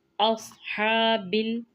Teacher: स्वाद को मोटा पढ़ेंगे, हा को वाज़िया करेंगे और खींच कर अदायगी करेंगे क्योंकि खड़ा ज़बर है।